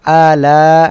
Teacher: এখানে মধ্যে মুত্তাসিল চার আলিফ টান হবে